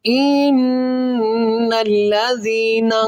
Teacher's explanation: یہاں پر نون مشدد ہے اور یہاں پر غنہ کریں گے، اس نون کے اوپر شد ہے، اس کے اوپر کیا کریں گے، غنہ کریں گے، اور غنے کی مقدار ایک الف ہے۔